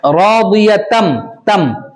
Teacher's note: اس میں ادغام میم ہو رہا ہے, ادغام مع الغنہ یعنی ادغام میم. تنوین کے بعد حروف ارملون میں سے کون سا حرف آ رہا ہے, میم آ رہا ہے, اس لیے ادغام ہوگا, ٹھیک ہے.